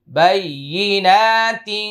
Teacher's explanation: তিংটা একটু মোটা করে কেন জানেন কফ আসছে ইকফা গুন্নাটা মোটা হবে